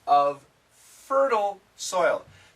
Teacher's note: these F sounds connect